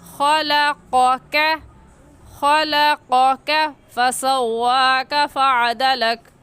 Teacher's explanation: قوف کا مخرج ہے کہ زبان کا آخر جو کوے کے پاس ہے تالو میں لگانے سے قوف نکلتا ہے، اور کاف کا ہے کہ زبان کا آخر جو کوے کے پاس ہے تالو میں نہ لگانے سے کاف نکلتا ہے۔